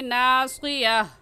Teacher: صاد ہے تو موٹا کر کے پڑھیں گے